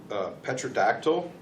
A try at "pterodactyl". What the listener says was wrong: Pterodactyl. The P is silent.